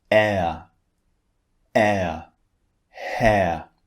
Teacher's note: sounds as I said the first one is long R and the second one is actually two vowels squeezed together that's why we change the shape of our mouth when we say this second vowel